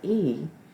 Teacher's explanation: it doesn't really sound like the T, sounds more like the D because of the co-articulation, the adjacent sounds that change the dynamics of how we say other sounds.